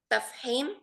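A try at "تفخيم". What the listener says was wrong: Ha atau kha? Tafkhim, mufakham.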